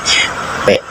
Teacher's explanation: bibirmu akan tertutup rapat lalu melepaskan udara secara tiba-tiba. Ini adalah bunyi bilabial menggunakan dua bibir dan posis polosif udara dihambat lalu dihempaskan.